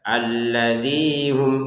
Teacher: Alladzinya ini dua harakat panjangnya. Jadi jangan lebih dari itu. Kalau kita baca alladzi hum itu lebih ya didayu-dayukan, dicengkok-cengkok itu enggak boleh.